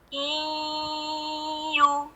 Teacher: Bunyinya tuh kayak orang bindeng gitu loh, Bapak, Ibu. Jadi masuknya rada ke hidung juga. Iyu. Jadi nggak sekedar iyu, bunyinya rada bindeng. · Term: gunnah